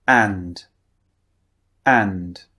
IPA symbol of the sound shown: æ